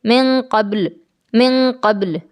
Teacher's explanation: نون ساکن کی آواز کو ناک میں چھپا لینا ہے، اور میم ساکن کی جو آواز ہے اس کو ہمیں کمزور اور ضعیف کر دینا ہے، جیسے من قبل، من قبل۔ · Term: اخفا